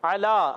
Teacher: عین کو حلق کے درمیان والے حصے سے علا، بعض بچے علا پڑھ دیتے، علا حمزہ سے، علا نہیں پڑھنا، عین کے ساتھ علا.